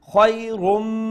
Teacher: the letter mim which is the idgham with gunna letter so we will pronounce the tanween with idgham and with gunna